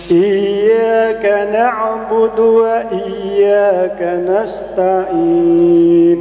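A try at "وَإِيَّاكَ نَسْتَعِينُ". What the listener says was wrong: Belum dapat ainnya. Nasta'in.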